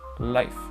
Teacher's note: c'est pas un I long, c'est vraiment un I court et explosif